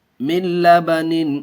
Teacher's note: نون ساکن کے بعد ادغام یرملون کے 6 حرفوں میں سے لام آیا ہوا ہے، اس لیے بغیر گنہ کے پڑھیں گے۔